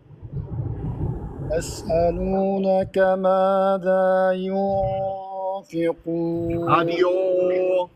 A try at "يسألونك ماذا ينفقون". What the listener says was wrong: ما رحت على المخرج. الفاء ما راحت على الفاء.